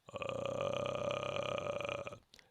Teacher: that vocal fry that uh is actually an octave below your regular voice so if you say oh [Music] and you go [Music] [Laughter]